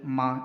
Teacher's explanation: മ എങ്ങനെയാ മ പറയുന്നേ രണ്ട് ചുണ്ടിന്റെയും തെല്ല് മുഴുവനും തൊട്ടുകൊണ്ടാണ് അല്ലേ മ രണ്ട് ചുണ്ടിന്റെയും അറ്റങ്ങൾ നന്നായിട്ട് സ്പർശിച്ചുകൊണ്ടാണ് മ എന്ന് പറയുക